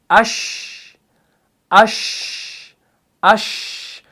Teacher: शीन को जब आप पढ़ते हैं ना तो हम पढ़ते हैं हमजा शीन ज़बर अश, अश, अश, तो हरफ शीन जो है ना ये एयर फ्लो को पास किए बगैर अदा नहीं होगा · लेकिन एक बात का ख्याल रखिएगा, इसके अंदर तफशी है, यानी इसके अंदर क्या हो रहा है कि शीन को अदा करते वक्त आवाज़ जो है ये मुंह के अंदर फैल जाती है, स्प्रेड होती है, लेकिन इसके अंदर पस्ती भी है और एयर फ्लो भी बाहर आ रहा है, तो इसके अंदर सिफते हम्स भी है।